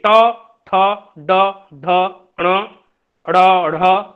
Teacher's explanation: और मूर्धन्य ध्वनियां देखिए, ट ठ ड ढ ण ड़ ढ़ और मूर्धन्य श, ये जो ध्वनियां हैं मूर्धन्य ध्वनियां, मूर्धन्य का मतलब है हमारी जीवा जाकर के मूर्धा को स्पर्श करती है